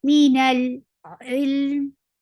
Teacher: Nal for fatha, open your jaws, attach with lam. Lam will get sifa of tawassut, and tawassut is a medium flow sound.